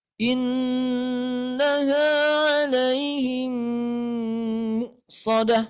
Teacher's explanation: Kemudian ada domah nih, ada hamzah setelah huruf mim. Maka di sini dihentakin suaranya. Karena hamzah itu mempunyai sifat syiddah.